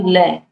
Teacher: जिनके उच्चारण में हवा जीभ के पार्श्व यानी कि बगल से निकल जाए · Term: पार्श्विक व्यंजन